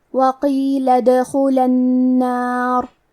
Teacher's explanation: کلمت ادخلہ میں حرف الدال پہ جزم ہے تو کیونکہ دال بھی حروف القلقلہ میں سے ہے تو ہم یہ حرف کو ہلاتے ہوئے یہ کلمہ کو پڑھیں گے